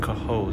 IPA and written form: kəˈhoʊz (Cohoes)